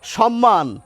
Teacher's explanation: দুটো ময়েরই উচ্চারণ আমরা করি